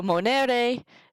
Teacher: So monere, the accent is on the NE, because in Latin, if that second to last syllable is long, that's where the accent goes.